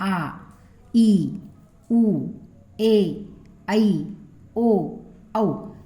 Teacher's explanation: दीर्घ स्वर म्हणजे काय पहा तर काही स्वरांचा उच्चार करण्याला करण्यास आपल्याला जास्त वेळ लागतो आणि त्यांचा उच्चार लांबट होतो त्यांना दीर्घ स्वर म्हणतात